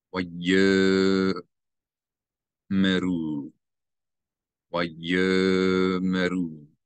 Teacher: So you're going to not pronounce the Aleph as a glottal stop. You read this as if the Aleph is not there.